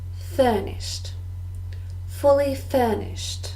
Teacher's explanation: Furnished, also 2 syllables, and we also stress the first.